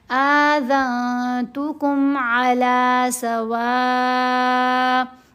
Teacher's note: واو کو 5 حرکت کے برابر لمبا کریں گے، حمزہ کو جھٹکا دیں گے کیونکہ یہاں اس کو ساکن کرنا ہے. · نون کی آواز کو ناک میں چھپانا ہے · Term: احفا